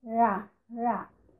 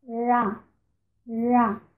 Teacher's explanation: Na retroflexa, há uma dobra da língua para dentro da boca, da ponta da língua. Então nós temos ra, ra, com a língua dobrada para dentro.